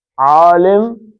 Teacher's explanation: عین، غین، یہ درمیان کے حلق سے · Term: درمیانی حلق